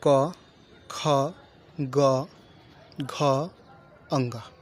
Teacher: क वर्ग के अंतर्गत जितने भी ध्वनियां आएंगी वह क्या होंगी? कंठ ध्वनियां आएंगी